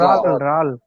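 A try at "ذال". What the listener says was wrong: রাল নয় না, না, রাল বলছে। জাল, জাল হালকা, জাল আর জ।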